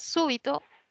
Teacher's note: súbito es una palabra esdrújula quiere decir que la mayor fuerza de voz está en la antepenúltima he tildado súbito por la regla de las esdrújulas que puesto